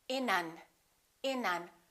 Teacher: we would connect the final consonant to the next vowel so this n and this a would be said together